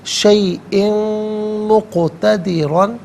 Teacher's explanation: شیئن مقتدرہ غلط ہے، شیئن مقتدرًا، قاف ساکن ہے لیکن حرف قلقلہ ہے تو یہاں آواز لوٹتی بھی محسوس ہونی چاہیے · وَكَانَ اللَّهُ عَلَى كُلِّ شَيْءٍ مقتدرًا، شیئن میں حمزہ کے نیچے 2 زیر کی تنوین، اس کے بعد میم آ رہا ہے، تنوین کو میم کے ساتھ ملا کر میم کی آواز کو غننے کے ساتھ ادا کریں گے، یہاں یرملوں کا قاعدہ اپلائی ہوگا۔